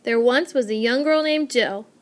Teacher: unstressed stressed unstressed unstressed stressed unstressed unstressed stressed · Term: very distinct meter